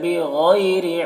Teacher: لیضلن ضاد کو پر پڑھیں گے، اور لن میں نون مشدد غنہ کے ساتھ پڑھیں گے، الف مدہ 1 الف کے برابر کھینچیں گے۔ بغیری میں غین کو پر پڑھیں گے، یالین سے نرم آواز کے ساتھ جلد پڑھیں گے، را کو باریک پڑھیں گے۔